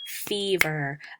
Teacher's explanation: when you say them your stress is actually on the beginning syllable